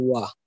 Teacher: So through the lips and the velum, it has been doubly articulated. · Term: labiovelar